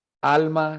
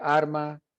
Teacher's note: ese trueque hablamos de del cambio de de los sonidos líquidos neutralización de l y r al final de sílaba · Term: neutralización de las líquidas